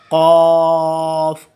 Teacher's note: इसका मखरज है जी जो हमारा थ्रॉट के अंदर लाइक जिसको हम उर्फ़ आम में कौवा बोलते हैं, एक छोटा सा हमारा पार्ट बॉडी पार्ट है हमारे थ्रॉट के अंदर, वो ज़ुबान अपर पैलेट के थ्रॉट के ऊपर वाले जो हिस्सा है उसके साथ टच करता है, देन कॉफ की आवाज़ निकलती है